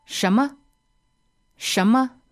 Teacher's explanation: second tone and neutral tone